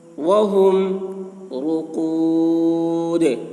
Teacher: دال میں قلقلہ یعنی دال کی آواز ڈبل نکلے گی۔